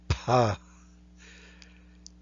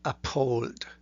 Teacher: this is not like an F, but it is P with a little bit more breath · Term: labial aspirated